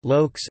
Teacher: Falling tone, kritosa intonatia. Brief rise followed by a long fall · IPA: [lùɔ̯ks]